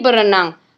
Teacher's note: dalam proses pengimbuhan perfiks ber pada dasar renang, maka bunyi r yang ada pada perfiks ber dilesapkan juga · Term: pelepasan fonem